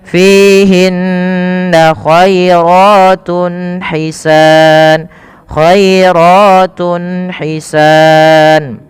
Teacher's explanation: Maka teman-teman, apabila kita dapati dalam bacaan Al-Qur'an kita ada dhammatain atau ada tanwin an, in, un atau nun sukun bertemu dengan huruf izhar halqi, yaitu salah satunya ha kecil, maka harus dibaca dengan jelas suara tunnya.